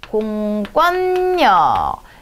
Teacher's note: 여기도 니은 때문에 뒤에 니은으로 바뀌어준 비음하고요. 이 권이라고 하는 거는요, 된소리 되는 겁니다.